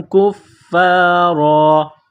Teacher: کفارا، را کے اوپر دو زبر تنوین ہے، جب یہاں پر وقف کریں گے، سٹاپ کریں گے تو دو زبر کی تنوین کو الف سے تبدیل کریں گے